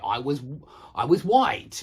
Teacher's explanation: It's an easier sound to make, which explains why so many people don't make the R sound, but they just make the W sound instead